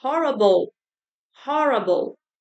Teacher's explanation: Você não fala o e ele some.